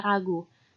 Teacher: Tril merupakan bunyi konsonan yang dihasilkan oleh getaran antara artikulator aktif dan pasif. Tril yang dapat ditemukan pada tabel A yaitu tril alveolar dengan bunyi R. Bunyi R merupakan bunyi bersuara. Contohnya pada kata ragu.